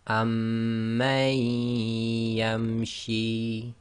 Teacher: So this will become amman yamshi. So effectively you drop the noon sakin sound and join the ma to the ya, as if ya's got a shadda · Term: idgham